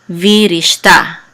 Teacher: So the accent is going to be on ta right here at the end.